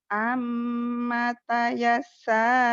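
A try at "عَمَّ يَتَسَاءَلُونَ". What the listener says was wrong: Terbalik. Ain. Amma yatasaalun.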